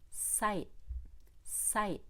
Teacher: we do hold the t and swallow at the end of that word but you have to move forward on the eye before you